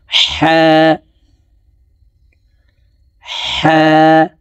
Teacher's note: হলকের মধ্যখান থেকে হা হরফের উচ্চারণ হবে, কারণ হার মখরাজ হলকের মধ্যখান থেকে হবে।